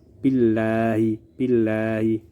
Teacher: Lafal Allah di sini berada setelah huruf yang bertanda baca kasroh, maka dibaca tipis. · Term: tarqiq